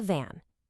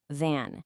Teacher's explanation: I hope you could hear that little vibration. That's my vampire teeth touching my lip.